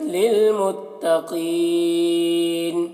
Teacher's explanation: قاف کو پر پڑھنا ہے